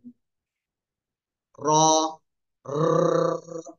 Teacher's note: জিহ্বার আগার পিঠ উপরে তালুর সাথে লাগাবেন, লাগিয়ে একটু মোটা আওয়াজে পড়তে হবে